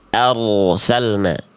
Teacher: Kalau ada ro sukun sebelumnya fathah harus dibaca tebal.